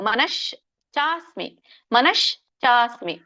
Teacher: ನಶ್ ಕೂಡಿಬಿಡುತ್ತೆ ಮನಶ್ ಮನಶ್ ನೋಡಿ ಮನಶ್ಚ ಅಲ್ಲಿ ಚ ಮಾತ್ರ ಪೂರ್ಣ ಬರುತ್ತೆ ಮನಶ ಕೂಡುತ್ತೆ ಚ ಮಾತ್ರ ಸೆಪರೇಟ್ ಬರುತ್ತೆ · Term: ಆಘಾತ